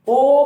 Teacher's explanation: ओ और औ को बोलने पे ओठों का और कंठ का इस्तेमाल होता है। ओ बोलोगे तो ओठों को घुमाना पड़ेगा, औ बोलोगे उसमें भी ओठों को घुमाना पड़ेगा, क्योंकि ये एक ऐसी क्रिया इनको बिना घुमाए, ओठों का बिना सहारा लिए ये स्वर नहीं बोले जा सकते हैं। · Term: कंठोष्ठ